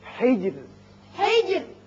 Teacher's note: یہاں را جب ساکن ہو جائے گا، چونکہ پیچھے زیر ہے اس لیے یہاں باریک رہے گا